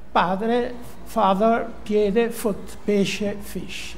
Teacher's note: si passa da una occlusiva a una fricativa